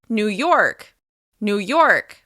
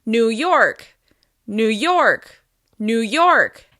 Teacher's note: As you can hear, we're stressing the second word, York.